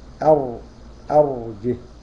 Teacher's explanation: التفخيم صاحبه التقعر في وسط اللسان اهو، وتضييق في الحلق بخلاف الترقيق، في الحلق منطقة الحلق هنا التقعر.